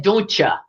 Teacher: that's a T and a Y that we just stuck in the middle and called it ch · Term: transitional sound